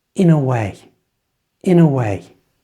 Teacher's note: Try to say in a way as one single flowing sound with the schwa in the middle.